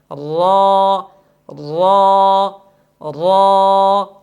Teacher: زبان کی نوک سامنے والے دانتوں کے ساتھ لگائیں گے، یعنی دانتوں کے مسوڑوں کے ساتھ زبان کا لیفٹ رائٹ تو لگ جائے گا لیکن بالکل زبان کا درمیان کھلا رہ جائے گا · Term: توسط